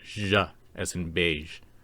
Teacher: Finally, the sh sound with gulmat luckily is just a voiced version of the sh sound. It is pronounced zh, as in beige.